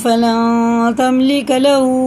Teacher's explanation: نون ساکن بعد تا رہا نا، تو اس کو نون کی آواز کو ناک میں لے جا کر ایک الف کے برابر کھینچ کے پڑھنا، اسی کو اخفا کہتے ہیں. اخفا کی مقدار ایک الف ہے.